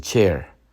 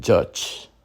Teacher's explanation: a consonant that begins as a stop complete obstruction of airflow and then releases into fricative. It's a combination of a stop and a fricative. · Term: africate